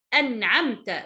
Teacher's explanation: I said the noon clearly way. I didn't do any غنة. I didn't disappear the letter noon. The noon will be so appeared because it has عين after it. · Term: إظهار